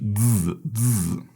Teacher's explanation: And again, Z means seed, so it has this kind of buzzing with a Z